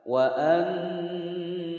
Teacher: mim sukun bertemu dengan hamzah, maka memnya harus dibaca jelas, tidak boleh didengungkan, tidak boleh ditawaludkan.